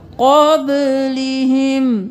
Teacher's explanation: यहाँ पे इख्फा करेंगे, क़ब, क़ौफ मोटा, बा क़लक़ला